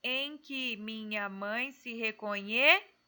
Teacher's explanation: O nhê é a sílaba tônica, então aqui somou um total de 9 sílabas poéticas.